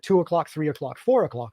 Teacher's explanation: So in England and Australia, 2 o'clock and 3 o'clock are shorter than 4 o'clock, which has a long vowel and then an inserted r sound. But in general American, 2 o'clock, 3 o'clock, 4 o'clock are rhythmically similar because all three phrases have just a vowel followed by a glide